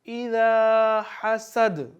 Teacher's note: اذا حسد، دال پہ قلقلہ کریں گے